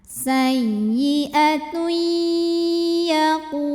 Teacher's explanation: Karena tanwin dhammah menghadapi huruf ya. Maka tanwinnya masuk ke ya disertai bunyi dengung. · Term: idgham bil gunnah